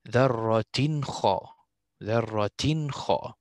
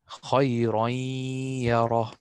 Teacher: I did not pronounce the noon here in the tanween